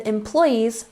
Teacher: make sure you're emphasizing the second syllable